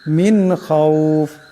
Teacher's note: এখানে নুন সাকিনের পর খা আসছে, এখানে গুন্না হবে না, বেলা গুন্না পড়তে হবে। খাউফ, এখানে লম্বা করিয়া পড়তে হবে।